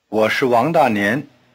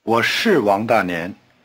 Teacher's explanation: when it is emphasized, as in, yes I am, 是 keeps its long R sound and the falling tone. · the word 是 is often weakened in a Chinese sentence to the point where nothing is left but a toneless SH sound.